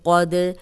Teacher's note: قد قوف موٹا پڑھیں گے، دال پہ قلقلہ ہے، یہ ہلا کے پڑھیں گے